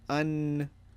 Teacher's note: you elongate the noon for an extra second not just on but on and we'll see that more more